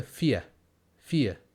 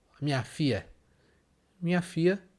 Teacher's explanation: Então você percebe que o som lha some e fica fia. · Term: jeito mineiro de falar filha